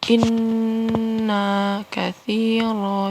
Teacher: inna ini gunnah ya, dibaca tahan gunnah 3 harokat